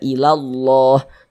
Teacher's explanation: maka lafaz Allahnya dibaca tabkhim, dibaca tebal. Jadi huruf lam yang di tengah nih, huruf lam jalalah nih, itu dibaca tabkhim huruf lam jalalahnya.